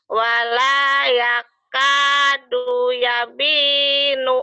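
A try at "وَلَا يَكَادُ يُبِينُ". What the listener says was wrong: Yubinu. Yubin, bukan yabin. Wala yakadu yubinu. Jangan ditekan. Wala yakadu yubin. Jangan wala yakado yubin. Jangan ditekan. Ayo, jangan ditekan.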